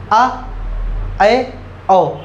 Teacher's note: अर्धविवृत में मुख आपका आधा खुला रहेगा